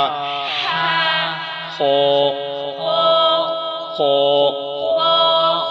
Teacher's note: خا کو موٹا کرنا، منہ کھول کے پڑھیں گے